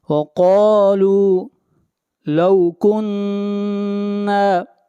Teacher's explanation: نون کے اوپر شد ہے، آواز ناک میں جائے گی